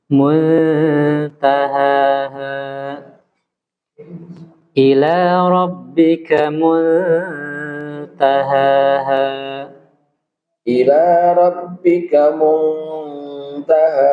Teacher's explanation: Iya, jadi ikhfa itu harus ditempo, Pak.